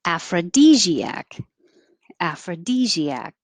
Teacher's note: the stressed vowel is e as in he